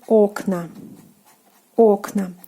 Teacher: in the plural form the stress falls on the first syllable. The ending is again A.